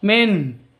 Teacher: nun mati bertemu dengan Ha jelas bacanya terang tidak boleh didengungkan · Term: izhar halqi